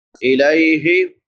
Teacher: لام کے بعد یا لین ہے، یا ساکن ما قبل فتحہ یعنی زبر ہے، اس کو نرمی سے پڑھیں گے